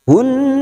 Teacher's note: Minhun, masuk pada alif lam samsiah, lam ta'rif yang tidak bersukun, idgham samsiah, fokus pada huruf nun yang bertasdid. Hunnaha, masuk pada huruf nun dan mendengung selama 2 atau 3 harokat